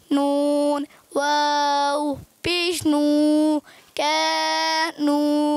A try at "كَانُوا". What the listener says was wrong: الگ نہیں کرنا. کانو الگ نہیں.